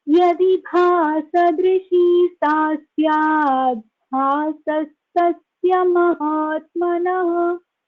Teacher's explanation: It should be chanted as Yadi Bhasadrishi. The Sa should be heard instead of the Visarga.